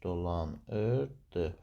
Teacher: Deməli dolanırdı sözündə vurğu sonuncu hecaya düşmüş olacaqdır. Burada dolanırdı sözündə bütün hallarda vurğu sonuncu hecanın üzərinə düşmüş olacaqdır. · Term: vurğu sonuncu hecaya düşür